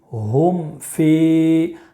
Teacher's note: با کے علاوہ کوئی بھی حرف آئے تو اظہار شفوی ہوگا، غنہ بھی نہیں کریں گے اور اخفا بھی نہیں کریں گے بلکہ ظاہر کر کے پڑھیں گے ، جیسے ہا میم پیش ہم، فا یا زیر فی، ہم